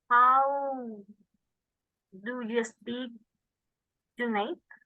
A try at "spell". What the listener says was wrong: How do you spell your name? If you say spill, that means regar. How do you spill something? Okay, so be careful with how we say words, all right?